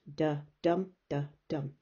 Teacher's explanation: It has two parts to it, the duh, dum. It is one unstressed and one stressed syllable. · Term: iamb